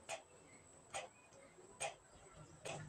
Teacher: Ang T ay napabilang sa pangipin at pasara. Ito ay walang tinig na bibigkasin natin na T, T, T, T.